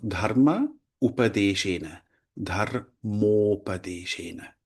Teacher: the A is followed by the U and therefore merges into O. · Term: Sandhi